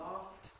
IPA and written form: lɑːft (laughed)